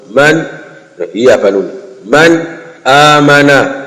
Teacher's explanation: nuni sakna au zikija baada ya tanwini basi hukumu ya hapo unatakiwa usome kidhari unatakiwa udhihirishe na wala usilete ghunna